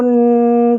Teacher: تنوین کو میں نے بتایا تھا کہ تھوڑی دیر غنہ کرتے ہیں تو یہاں پہ با دو پیش بن، تھوڑی دیر غنہ کریں گے، ناک میں آواز ٹھہرائیں گے